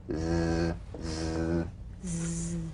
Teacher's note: Zzz, zzz, zzz, zzz, the Z cognate S, a voiced S sound fricative. The tongue rim should gently touch the upper gum ridge.